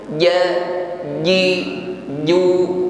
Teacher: Ji dijaga tekanan hurufnya ketika mengucapkan huruf Jim ja ji Ju tidak ada nafas atau desis yang menyertainya